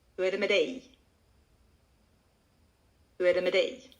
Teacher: we just connect the two into one word with a lot of unstressed syllables before we come to the final one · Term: stressed word